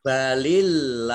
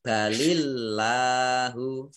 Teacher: Balillahu, Allahnya dibaca tipis karena harokat di depannya kasroh. Jadi dibaca lamnya tipis.